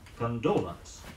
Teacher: The word is stressed on the second syllable, condolence.